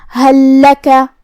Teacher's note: کلمت حل کے آخر میں یہاں لام ساکن ہے، پھر حرف اللام ہے کلمت لکا، تو یہاں حکم ہوا ادغام، تو ہمیں پہلے لام کو دوسرے لام میں ملا کے ایک ہی لام لیکن اسے تشدید کے ساتھ پڑھیں گے۔